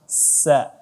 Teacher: huruf sin ditipiskan dan tidak ada seperti huruf shin